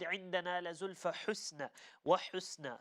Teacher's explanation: make sure the ha is from the middle of the throat, not from the bottom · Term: the letter ha